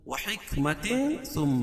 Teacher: تو یہاں ناک میں آواز کو چھپا کر پڑھیں گے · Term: اخفا حقیقی